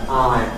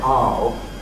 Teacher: [aɪ] a rather fronter starting point, [ɑʊ] a rather backer starting point